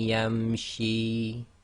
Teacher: So effectively you drop the Noon Saakin sound and join the Ma to the Ya, as if Ya's got a Shadda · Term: Idghaam